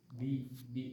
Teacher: Ba, huruf ba itu huruf jahr. Jadi tidak keluar nafasnya.